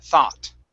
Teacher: in the united states we use an ah we say thought